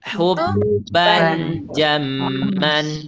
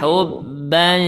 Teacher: gini suaranya hubban jamman Nah ya tapi ini di diikhfa jadi yang seharusnya huruf nun atau huruf N kita ganti ke huruf Eng